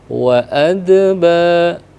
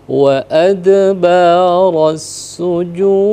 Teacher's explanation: Pertama itu qalqalah sughra, yang kedua dal yang disukunkan karena faktor kita waqaf atau berhenti, itu masuk dalam kategori qalqalah besar atau kubro, maka berbeda pengaplikasiannya. Jadi yang pertama wa adba, ya, sekali lewat karena sugro. yang terakhir itu memang harus dipantulkan lebih besar.